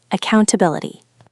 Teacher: The main stress is on the fourth syllable.